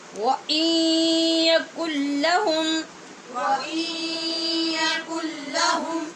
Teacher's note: سے ہے تو غنّے کے ساتھ ہم نے ادغام کیا، اور کن نون ساکن کے بعد لام، یہ بھی حروف یرمالون میں سے، یہاں بغیر غنّے کے ہم نے ادغام کیا · نون ساکن کے بعد یا حروف یرمالون میں سے ہے تو غنّے کے ساتھ ہم نے ادغام کیا